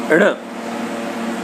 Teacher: ण जो कि है सघोष अल्प प्राण है और नासिक्य है